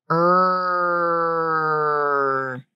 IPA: ɹ